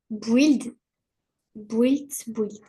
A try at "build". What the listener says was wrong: Alors, build, build. Le U, tu l'enlèves. Enfin, le U, tu le prononces pas.